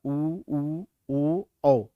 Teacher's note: तो इसमें आप देखेंगे ह्रस्व उ, दीर्घ उ, ओ, औ। इनका उच्चारण करके देखेंगे, इसमें होंठ जो है वो गोलाकार बनेगा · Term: वर्तुल